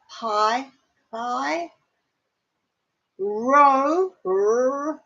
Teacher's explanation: Rho, that's the rolling throat R.